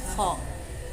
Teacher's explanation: pangkal lidah, velar, geseran, tidak bersuara